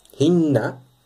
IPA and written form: hi|nːɑ ((h)inna)